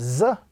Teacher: this letter is pronounced when the tip of the tongue touches the edges of the two lower front teeth and very slightly touching the edges of the two upper front teeth. That combination gives the sound of Z, the sound of Z in the English language, and also the sound of the letter Z. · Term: letter Za